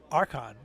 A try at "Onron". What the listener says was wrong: No. No. There is no K. There's no K sound. Onron.